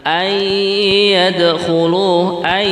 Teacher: Maka di sini kalimat ayyadkhuluha dibaca idgham bi gunnah.